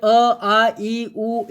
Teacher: હવા જે છે એ ક્યાંય અવરોધાતી નથી. દાખલા તરીકે તમે અ બોલો એટલે હવા જે છે એ સીધી બહાર આવી જાય છે અને અવાજ ઉત્પન્ન કરે છે. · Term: સ્વર